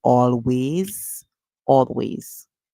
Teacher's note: the s at the end makes a sound like z